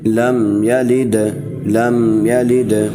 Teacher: اس کے بعد لم یلد، لم یلد، لام کو میم سے ملائیں گے اور کیونکہ میم کے بعد جزم ہے، اور یا کو بغیر کھینچے پڑھیں گے اور لام کو دال سے ملائیں گے، لام کے نیچے زیر ہے، لام کو دال سے ملائیں گے، دال کے اوپر زبر ہے، دال پر قلقلہ کریں گے